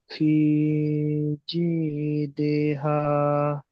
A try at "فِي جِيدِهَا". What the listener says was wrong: في جيدها. দি টান হয়ে যাচ্ছে আবার। ফি জিদিহা।